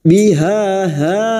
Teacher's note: huruf ha ini memiliki sifat rokhah, yaitu mengalirnya suara ketika membunyikan huruf tersebut. Ha yang pertama ini kita panjangkan 2 harokat mad tabi'i, fathah diikuti alif.